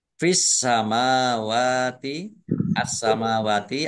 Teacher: asamawati alif lam syamsiah karena tidak dibaca langsung masuk ke huruf berikutnya yaitu Sin ditandai sinnya ada tasdiknya sinnya dibaca dobel mim fathah berdiri Mad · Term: Sinnya dibaca double, alif lam samsiah